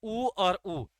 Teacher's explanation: उ और उ, इन दोनों का जो उच्चारण किया जाता है वो किसकी सहायता से किया जाता है, ओष्ठ की सहायता से। और ये कैसे वर्ण कहलाते हैं, ओष्ठ वर्ण।